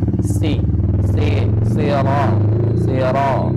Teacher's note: Walaupun sa itu berharakat kasrah, ya. Tetap pangkal lidahnya tetap naik.